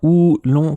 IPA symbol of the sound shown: uː